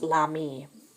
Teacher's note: because ami starts with a vowel, it's l'apostrophe, and it kind of all runs together, so that's pronounced l'ami.